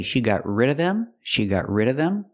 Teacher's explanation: if the word of is before a consonant sometimes you don't hear the V sound